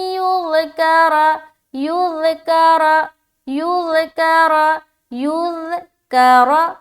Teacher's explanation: را زبر را کو موٹا رکھنا ہے کیونکہ را کے اوپر زبر ہے